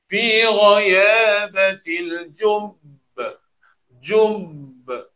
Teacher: Kita tekan dulu, kemudian kita lepaskan. Memang pada ba tekan dan kita lantunkan huruf ba. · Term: qalqalah